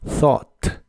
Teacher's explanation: La TH de thought se pronuncia soplando entre la punta de tu lengua y tus dientes de arriba, y de las demás letras solo se pronuncia la O y la T del final.